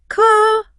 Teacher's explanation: you point and ask, Ka? with a rising tone